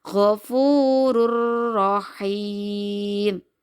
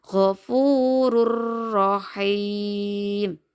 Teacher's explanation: tanwin bertemu dengan huruf ro kita belajar ya gofurur Rahim nah suara dumah tanwinnya juga langsung masuk kepada huruf ro